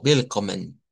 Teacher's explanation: Les decía que willkommen con doble M y N, willkommen es para decir bienvenido, con la diferencia de que la W en el Deutsch se hace como una V